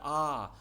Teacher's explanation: तो आ जो है यह विवृत है। आ बोलते समय मुख पूरा खुलता है आ। और विवृत का अर्थ होता है पूरा खुला हुआ।